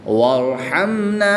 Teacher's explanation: را ساکن سے پہلے حرف پر زبر ہے تو اس لیے اس را کو پر یعنی موٹا پڑھیں گے